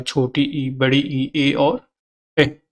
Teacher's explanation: जिनके उच्चारण में ओठों की आकृति अवृत्ताकार हो जाती है वे अवृत्ताकार या अवृत्तमुखी कहलाते हैं